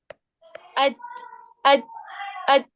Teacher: اب جیسے آپ نے تا پڑھا تو تا کا مخرج یہ ہے کہ زبان کی نوک اوپر والے دانتوں کے جڑ سے لگے تو تا ادا ہوتا ہے. بس وہ جا کے آپ کی زبان کی نوک دانتوں کے مخرج پہ جا کے لگ رہی ہے، تا کے مخرج پہ جا کے لگ رہی ہے، بس وہاں جا کے وہ ٹچ ہو رہی ہے.